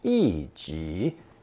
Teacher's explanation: Notice that the number 1 is fourth tone, 一 己, in this expression because it's not actually being used as a number, but rather in the sense of alone.